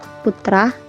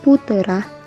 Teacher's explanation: menambahkan bunyi vokal tertentu di antara dua konsonan untuk memperlancar ucapan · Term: Anaptiksis